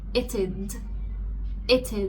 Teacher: we added something called the schwa sound between it and the d